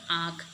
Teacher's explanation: चंद्रबिंदु करते समय नाक और मुख दोनों ध्वनि ऐसे निकलती है